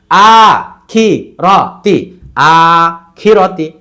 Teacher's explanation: আতে টান, খিরতি তাড়াতাড়ি, একসাথে আ খিরতি।